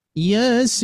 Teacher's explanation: Jadi Yasin langsung sinnya. Sinnya harus 6 harokat ya secara kaidah.